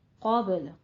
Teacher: قوف کو بھی پر پڑھیں گے، باقی پر قلقلہ کریں گے